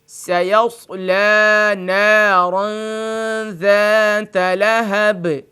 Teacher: سیصلی میں جو لام کھڑی زبر ہے اس کو بھی کھینچ کے پڑھیں گے